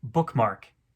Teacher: another two-syllable foot with the pattern stressed stressed · both syllables are stressed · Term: spondy